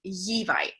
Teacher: he was gliding his L, so he was saying Yevi instead. He was 5, so we can expect the L to still kind of be developing around 5, but because it was an important sound to him, we definitely wanted to include it for the sounds that we were working on.